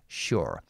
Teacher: if you want the American pronunciation, sure, you just pronounce the R at the end. Sure. I'm British, so I don't pronounce this.